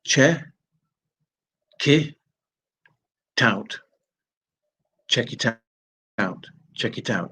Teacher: the consonant at the end is going and joining the vowel that begins the next word so check it out actually sounds like Che K tout cck